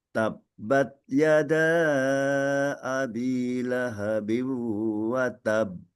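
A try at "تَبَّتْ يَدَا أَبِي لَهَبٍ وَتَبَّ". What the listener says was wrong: Ta yang sukun tabbat. Ah ini juga ada desisnya meskipun kecil.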